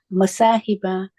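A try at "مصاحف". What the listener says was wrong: Masahifa. It's a ha, not a ba. Masahifa.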